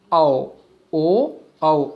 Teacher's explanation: कंठोष्ठ मतलब कंठ और होठ के स्पर्श से, मतलब वायु स्पर्श होती है कंठ और ओष्ठ से, कंठ से स्पर्श होकर के ओष्ठ से भी आगे चल करके स्पर्श करती है।